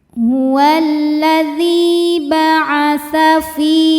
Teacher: Huwallazi hukumnya mad tabi'i zahiri sebab ada ya sukun didahului harokat kasroh. Cara bacanya dipanjangkan dalnya 2 harokat. · Saat berhenti di fi, hukumnya adalah mad tabi'i sebab ada ya sukun didahului harokat kasroh, maka panjang fi-nya 2 harokat. Fi berhenti panjang, kalau diteruskan jadi pendek, gugur madnya, namanya takhallus bil hadfi.